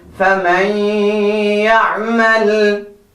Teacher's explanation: noon sakin and after that you have ya coming from yanmu, the 4 letters of idgham and with ghunna